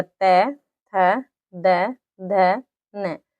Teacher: जब हमारी जीभ क्या होती है, दांतों से स्पर्श होती है। जैसे त के लिए हमारी जीभ आती है दांतों पर, त, थ, द, ध, न।